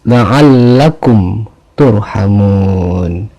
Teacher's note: mim mati bertemu dengan huruf ta sehingga dibaca jelas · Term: izhar syafawi